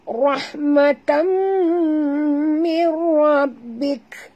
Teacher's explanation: tanwin bertemu dengan mim idgham ma'al gunnah dengung ya tutup mulut